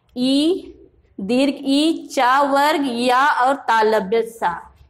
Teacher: इन वर्णों का उच्चारण तालु से होता है इसलिए इनका उच्चारण स्थान तालु है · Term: तालव्य वर्ण